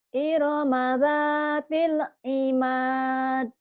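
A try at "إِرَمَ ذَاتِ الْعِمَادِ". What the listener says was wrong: Jangan ditahan gitu Bu ya, jangan dicicil. Jangan iromadatil imad. Jangan ada jeda. Harusnya gini. Irama dzatil imad. Imad, jangan imad. Nah, itu ada jeda, jangan nih lagi.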